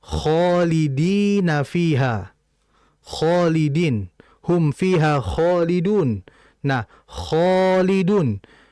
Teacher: ada alif, sebelumnya terdapat huruf kha. Dan huruf kha ini merupakan huruf yang tafkhim, tebal, maka alif pun harus mengikuti huruf tebalnya tersebut yang ada pada sebelumnya.